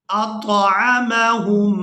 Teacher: میم مشدد کو یہاں پر ادا کرنا ہے. ہا کو اس میم مشدد کے ساتھ ملائیں گے اور غنہ کے ساتھ ادا کریں گے